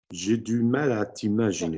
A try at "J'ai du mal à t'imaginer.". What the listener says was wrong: Non, j'ai du mal à t'imaginer. There's not a down vowel there. J'ai du mal à t'imaginer.